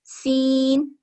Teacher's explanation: زبان کو اوپر والے دونوں دانتوں کے ساتھ لگا کر اور سانس کو باہر لیتے ہوئے اس کی ادائیگی ہوتی ہے۔ سین، درمیانی آواز میں اوپر نیچے کے دونوں دانتوں کو ملا کر سیٹی کی آواز کے ساتھ ادا ہوتا ہے۔ سین، اوپر اور نیچے کے دونوں دانتوں کو ملا کر اس کی ادائیگی ہوتی ہے۔